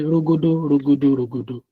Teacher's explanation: So like rogodo is very round, rogodo is mid round, and rogodo is like big, and it's just like high tone, mid tone, and low tone